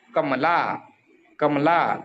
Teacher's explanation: शेवटचा जो ला आहे त्याचा उच्चार जास्त वेळ करावा लागत आहे